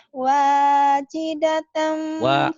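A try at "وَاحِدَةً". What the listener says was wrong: Wahidatan bukan wajidatan, wahidah.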